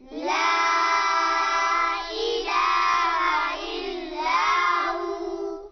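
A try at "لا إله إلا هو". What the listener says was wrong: ला के ऊपर छोटी मद है, खींचेंगे इसको। ला इलाहा इल्ला हू।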